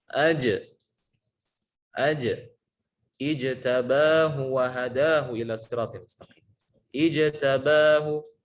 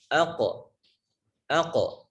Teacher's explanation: huruf q juga sama ketika sukun dia akan memantul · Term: Qalqalah